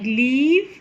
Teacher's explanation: go into the nasal cavity because the soft palate is raised the air then goes out into the oral cavity and finds the contact between the tip of the tongue and the alveolar ridge but still the air can pass out through the sides of the tongue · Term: lateral